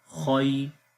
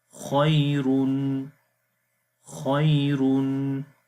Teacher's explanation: Ya Sakin is preceded by Fatha. It's Ya Leen here. We do not long, we only make soft sound. Khoy. Ra double Dhamma, Run, Khoyrun, Khoyrun.